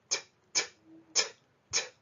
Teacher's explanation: a dull T sound that's produced by placing the tongue against the palate, and it's a t, t, t, t sound.